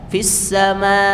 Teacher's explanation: dia menutup kuat pada makhraj pangkal tenggorokan ya terhenti · ada tekanan pada huruf hamzah itu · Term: syiddah